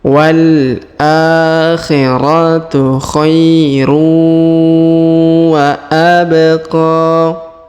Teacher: atau kita qqalahkan karena di sini berharakat sukunnya wa abq kemudian huruf q kita panjangkan dua harakat karena di atasnya terdapat Alif kecil dan di depannya terdapat alif bengkok atau Alif maksurah walakhiratuhairu wa